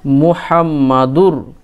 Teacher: র এর উপর তাসদিদ আছে সেইজন্য দালের সঙ্গে র মিলিয়ে পড়বো ইদগাম করে পড়বো